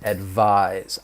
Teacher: that S is going to have more of a Z sound, that voiced Z